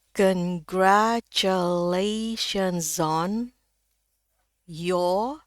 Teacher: Kalau ee ada huruf mati atau tanda koma atau tanda titik itu R-nya hilang. Jadi ini cuma dibaca panjang aja O-nya ya. Sebenarnya ini O yang sama dengan ini bedanya panjang dikit.